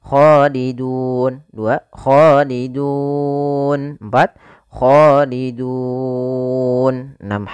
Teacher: Boleh 2 harokat, boleh 4 harokat, dan boleh pula 6 harokat. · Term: mad arid disukun